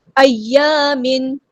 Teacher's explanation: تنوین کے بعد یہاں پہ ظاہر کریں گے، اظہار ہو رہا ہے کیونکہ اس کے بعد حروف حلقین سے حمزہ آیا ہے